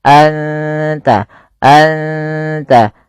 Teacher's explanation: suara nunnya samarkan ke ta dan tidak boleh dijelaskan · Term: ikhfa hakiki